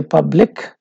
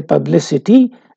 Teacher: When we say public, it ends with k sound, but when you say publicity, this is changed to s sound.